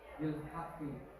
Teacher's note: Qaf itu biasanya kalau berhenti menjadi qalqalah.